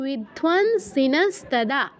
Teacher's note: অনুস্বারের স্থলে নয় হসন্ত উচ্চারণ হবে, যেহেতু পরে দন্ত বর্ণ আছে।